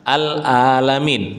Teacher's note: Menggunakan ain. Bukan menggunakan hamzah.